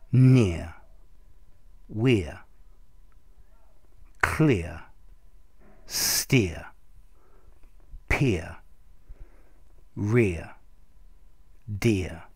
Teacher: it's a long e followed by a schwa sound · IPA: ɪəʳ